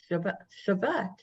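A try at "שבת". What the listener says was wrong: Shabbat. The second one is Shabbat. It's a V.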